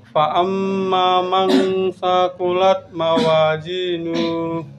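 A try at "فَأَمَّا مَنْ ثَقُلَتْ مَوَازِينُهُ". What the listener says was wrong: Pendek. Mawazinu. Fa amma man di situ man agak lama. Mawazinu.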